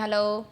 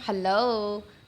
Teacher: तो ह जो है ना वो गायब हो जाता है